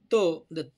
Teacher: हे आपल्या बघा आता त म्हणा त म्हणताना आपल काय होतं जिबीचा शेंडा दातांना स्पर्श करतो म्हणून त्याला दंत म्हणायचं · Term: दंत्य वर्ण